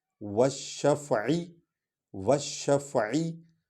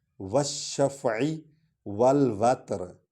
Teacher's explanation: عشر والشفعی، والشفعی، والشفعی، یعنی وا اور شین کو اکٹھے پڑھ رہے ہیں، شین پر چونکہ شد ہے، یہ مشدد حرف ہے، اس کو دو بار پڑھیں گے